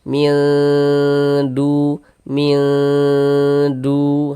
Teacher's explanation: Nah, kemudian didengungkan. Jadi bagian minnya itu kita tahan sejenak suaranya. Nah, kita panjangkan kira-kira sepanjang dua harakat.